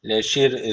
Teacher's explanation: Öncesindeki harf alttan bağlandığı için ra harfi burada ince okunacak.